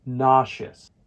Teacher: remember that the stress falls on the first syllable